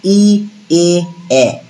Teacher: ই এ এ উচ্চারণ করার সময় আমাদের ঠোঁটটা প্রসারিত হচ্ছে, টান পড়ছে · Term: প্রসারিত স্বরধ্বনি